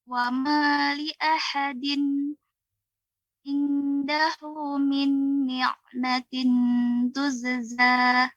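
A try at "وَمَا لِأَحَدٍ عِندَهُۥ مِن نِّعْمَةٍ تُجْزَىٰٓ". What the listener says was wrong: Masih terasa Ibu ya pengucapannya ya lidahnya ditempelkan, seharusnya tidak ditempelkan. Lidah di tengah. Bedakan kalau saya tempelkan ke langit-langit. Dahu, ain. Nah, ini dia seperti huruf nun yang bertasydid, maka kurang tepat. Akan tapi disamarkan. Ini dibantu dengan rahang ke bawah. Dahu dengan juga min ni'matin tujza.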